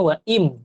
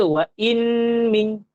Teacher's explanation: Sebutannya wa'im terus ke mim. Jangan baca wa'in min.